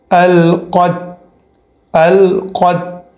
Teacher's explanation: پہلے بڑا قوف آنا چاہیے اور پھر لاسٹ میں جو ہے وہ چھوٹی تا کا آواز آنا چاہیے